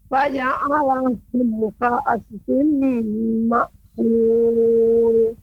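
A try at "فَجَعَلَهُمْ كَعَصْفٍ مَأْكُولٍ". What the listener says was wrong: Catatannya Ibu yaitu pengucapan sad ka'asfim, ya, masih terdengar seperti pemantul. Ya, banyak huruf-huruf yang agak dipantulkan sama ibu. Di antaranya shad misalnya ka'asfim. terdengar masih ka'as, ya, atau mim, ya, faja'alahum, ya, faja'alahum ka'asfim ma'kul.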